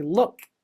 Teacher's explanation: So I stop the air and then make a little click sound for the K.